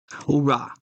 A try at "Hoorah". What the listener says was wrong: Hoorah, not who. It's not who, homies.